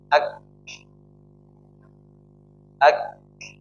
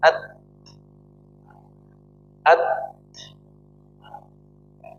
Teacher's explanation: Huruf kaf dan ta ini hanya mengalirkan aliran nafas ya. Tapi dia aliran suaranya tertahan. Coba. Jadi tahan dulu ya, ketika mengucapkan huruf kaf sama ta ini tahan suaranya.